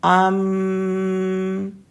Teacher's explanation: दोनों हंठ आपस में मिलते हैं और मीम भी दोनों हंठों से निकलता है